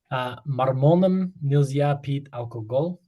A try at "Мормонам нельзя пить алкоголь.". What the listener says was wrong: Молодец. Все, мормонам.